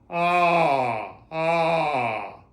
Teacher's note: the attack that's initiated by the breath first. So that one is is more like ah ah a little bit of air but not ha and certainly not a glottle a stroke.